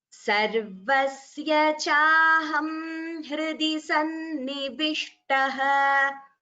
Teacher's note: because we are pausing, we are splitting the sandhi and chanting as sannivishtaha